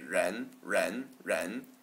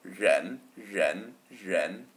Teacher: The R sounds just a little bit like a Z, but in the back of your mouth. So make a Z sound, and then move your tongue all the way to the back of your mouth like you're trying to say a J sound.